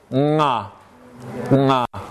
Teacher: it's voiced it's a velar stop it's nasal there is no letter for this in our orthography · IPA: [ŋ]